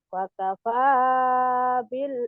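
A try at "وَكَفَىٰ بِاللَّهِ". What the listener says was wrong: Bukan fakapa tapi wakapa bukan fakapa. Kalau wow maka wadan. Artinya lain.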